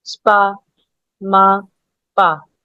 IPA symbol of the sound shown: a: